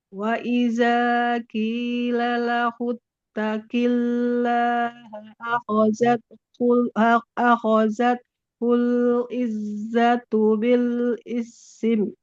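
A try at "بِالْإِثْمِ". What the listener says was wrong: Nggak boleh bil isim ya. Bil ism. Soalnya jangan jadi kasro, jangan bil isim, bil ism, bil ism.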